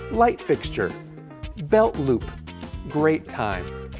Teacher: I'll drop the T at the end of the first word then merge the second word into the first word